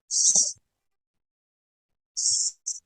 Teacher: alveolar fricative, voiceless